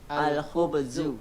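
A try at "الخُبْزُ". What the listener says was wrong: Zai, bukan zal, tapi zai. Al-khubzu. La, bukan zu, tapi zu. Seperti Z, seperti huruf antum. Huruf kita dalam bahasa Indonesia Z. Z. Bisa Z. Za. Za.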